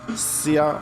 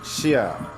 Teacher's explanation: the shin could give a S or a SH sound